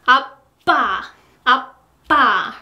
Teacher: your lips, they need more time to be closed, like this, and then they will be bursted